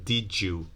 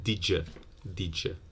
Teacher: did you might be assimilated to J and become did you, or making the you a schwa, did ya, did ya.